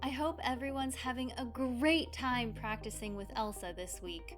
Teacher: I said the word great much louder and with a higher pitch because I was trying to convey a positive emotion. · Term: intonation